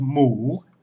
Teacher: And for this example, I'm just going to use the Thai word for pig, which has a basic sound of mu, M-O, long oo, but it needs to be pronounced with a rising tone. And all we need for the basic sound is an M initial consonant, more ma, and a long oo vowel, the sara oo.